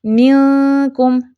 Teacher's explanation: میم کی زیر کو ایک حرکت کے لیے نیچے لے کے جانا ہے اور پھر اخفا کو ادا کرنا ہے